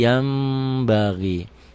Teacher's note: Basir yanbagi Yan yanbagi dibacanya Jadi yambagi kenapa karena nun mati nun mati nun sukun ketemu ba satu kata satu kalimat bunyi n-nya berubah menjadi m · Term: iqlab